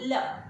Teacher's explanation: ल को बोलते समय जीवा उल्टी मुड़ती है, ल, इसलिए इसको पार्श्विक के नाम से जानते हैं क्योंकि ये पश्च वर्ण से बना हुआ है।